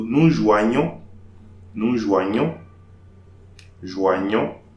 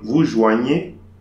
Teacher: the gn will be pronounced nya, like a y, like a letter y.